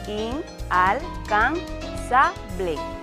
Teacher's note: La palabra es llana y la fuerza de pronunciación recae, por supuesto, en la penúltima sílaba.